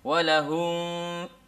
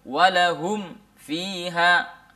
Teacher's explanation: Jelas, jelas mim sukunnya mati, betul-betul mati, lalu kemudian kita baru masuk ke dalam fa, ya, huruf setelah mim sukun tersebut. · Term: izhar syafawi